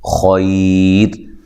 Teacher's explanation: را ساکن سے پہلے یا ساکن ہو تو را کو باریک پڑھا جاتا ہے، ٹھیک ہے۔ یہ وقف کی صورت میں را ساکن ہو جائے گی، اس سے پہلے یا ساکن ہے، خیر۔